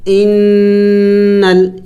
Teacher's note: حمزہ نون زیر ان، لام زبر نل، انل، یہاں پہ دیکھیں میں نے غنہ کیا، ناک میں آواز کو پیدا کیا